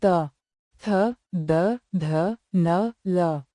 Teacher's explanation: दंत्य व्यंजन वे हैं जिनका उच्चारण दांतों पर जीभ लगने से होता है, जैसे त, थ, द, ध, न, ल।